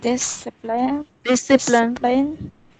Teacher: The accent is on the first syllable.